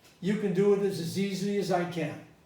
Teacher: well i stress the can